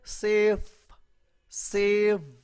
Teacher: अब सेफ और सेव में आखिरी जो लफ्ज है, ठीक है, फ और व, यहाँ पे जो है ना मतलब है कि मेरा क्या हो रहा है, मेरे वो ऊपर वाले जो टीथ हैं वो मेरे नीचे वाले लिप के साथ जो है ना वो टच हो रहे हैं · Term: लेबियो डेंटल